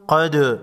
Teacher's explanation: دال ساکن کو ہلا کر پڑھیں گے